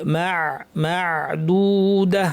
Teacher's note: আইনকে একটু চাপ দিয়ে বলতে হবে মাদুদা আইন যেন নাকে চলে না যায় গলার থেকে